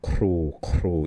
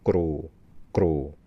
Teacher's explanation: It's got aspiration. The throat is open. And you've got this air puffing over.